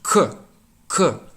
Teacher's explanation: there's no puff of air that comes out of your mouth so the piece of paper will stay still that's an ideal